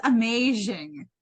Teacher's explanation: She says amazing. Like she makes like a sh sound.